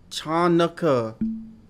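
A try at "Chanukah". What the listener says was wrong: This is silent. I see it. The C is silent.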